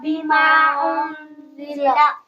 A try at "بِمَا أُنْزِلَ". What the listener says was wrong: بما انزل ان پہ غنہ کرنا ہے، انزل،